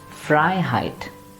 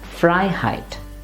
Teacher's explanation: Rather, the meaning part of the word, which is frei here, the freedom, that should be stressed.